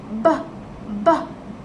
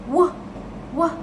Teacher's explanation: a sound produced by bringing both lips together when producing a BAL sound the lips come together to create